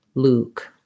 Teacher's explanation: Luke is the highest, most closed mouth, most rounded and tense vowel. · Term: oo vowel